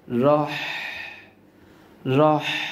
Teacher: গলা চেপে উচ্চারণ করতে হবে পাশাপাশি বাতাসের একটি সাউন্ড গলা দিয়ে বের করতে হবে